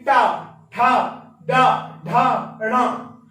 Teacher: जीभ का जो अग्रिम हिस्सा होता है, ये हमारा ऊपर टकराता है, तो ये हमारा मूर्धा कहलाती है